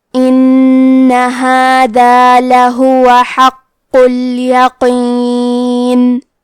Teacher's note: کلمت ان میں حرف نون پہ تشدید ہے، لہذا 2 حرف کے برابر نون کو پڑھنا ہے. · کلمت حقوں میں قاف پہ تشدید ہے، تو 2 حرف کے برابر حرف القاف کو پڑھیں گے، اور کیونکہ تشدید پیش کا ہے تو ہم قاف کو صرف پیش سے پڑھیں گے.